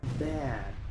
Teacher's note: Muchos pronuncian esta palabra bat o bad, pero aquí la a se pronuncia ea. La d no se pronuncia como una t, casi no hace un sonido. La d se usa para parar el escape de aire. Así que esta palabra se pronuncia bad.